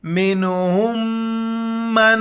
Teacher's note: میم نون زیر من، ہا میم پیش ہم، میم نون زبر من، منہم من، دونوں جگہوں پر ناک میں آواز چھپانا ہے